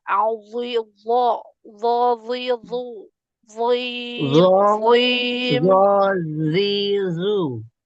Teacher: Huruf zo-nya masih melemah. Nah, itu juga harus dilatih untuk biar dia lebih tebal lagi.